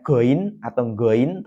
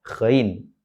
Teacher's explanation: tempat keluarnya yaitu tenggorokan bagian atas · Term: huruf ghain